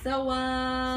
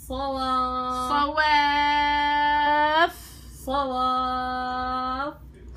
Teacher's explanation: الواو مرققه بس الصاد المفخم اه وبعدين بتنزلي بنبر وبتجيبي الفاء فيها همس صواف عشان يبين